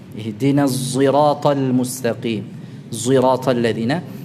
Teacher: Jadi sadnya dibaca ada pengaruh huruf zai. Ada semacam pengaruh suara zainya. Tapi yang kita ucapkan bukan zai murni tetapi huruf sad ya, pada makhraj sad. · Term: ismam